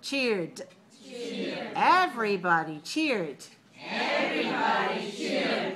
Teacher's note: cheer, and then we add d, but we don't add another syllable.